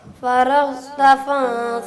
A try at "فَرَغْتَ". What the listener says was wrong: ٹھیک ہے، را کو بھی موٹا کریں.